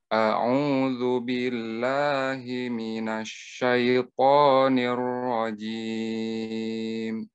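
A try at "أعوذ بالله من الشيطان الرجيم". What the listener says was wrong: Sya-nya jangan ismam, minash, minash, bukan minash. A'udzu billahi minash, bukan nash, nash. Nash, sya, sya. Maksud saya ismam itu, ismam itu tidak boleh menggerakkan dua bibirnya kalau tidak penting. Misalnya, nash, nash, nggak ada hubungannya. Nash, syat, syat itu tengah lidah. Nash, a'udhu billahi minash syaitanir rajim.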